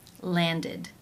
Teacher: the past tense of this regular verb is landed id with the e as in sit and the d sound